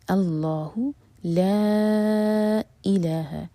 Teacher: لا یہاں پر مد ہے، اس کے بعد جو ورڈ ہے وہ حمزہ سے شروع ہو رہا ہے، تو یہ ہے مد منفصل 4 حرکہ لمبا · لام جلالہ ہیوی اور لا 2 حرکہ لمبا